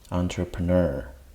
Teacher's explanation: the stress syllable is the last syllable